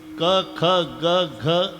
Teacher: क ख ग घ ही पूर्ण लाईन कंठातून उगम पावते. कंठे स्थान आहे.